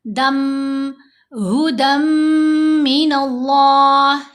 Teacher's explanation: ابھی دیکھو میم اس میں ہے اور دال کے اوپر 2 زبر ہیں، تنوین ہے، تو ہدن، دال 2 زبر، دن میں جو نون ہے وہ ہم نے مرج کر دی میم کے اندر، ساتھ ہم نے غنہ کر لیا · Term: ادغام